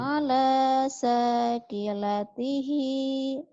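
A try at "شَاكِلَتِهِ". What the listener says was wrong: bukan shinnya gede. Ala syakilatihi. Ala syakilatihi.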